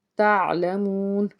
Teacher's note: واو ساکن سے پیچھے پیش، ایک الف کے برابر اس کو کھینچ کے ادا کیا اور آگے وقف ہے جس کو ہم کہتے ہیں وقف تام۔